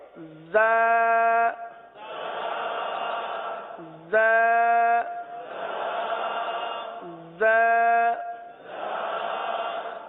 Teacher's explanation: جب ہم دونوں دانت بند کر لیں گے، جب ہم دونوں دانت بند کر لیں گے تو اب یہ دونوں کے کنارے پر زبان لگانا آسان ہو جائے گا۔ ویسے زبان زیادہ تر نیچے کی جانب رہتی ہے اور نیچے کی جانب رہ کر زا سیٹی کی آواز کی طرح اس حرف کی آواز نکلتی ہے